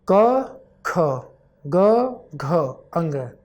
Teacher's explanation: पहला तीसरा और पांचवा वर्ण अल्पप्राण होता है और दूसरा और चौथा वर्ण महाप्राण होता है